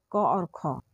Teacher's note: तो कंठ ध्वनि जो है वो क ख होता है